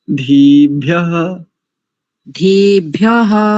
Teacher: इकार को थोड़ा सा दीर्घ कर लेंगे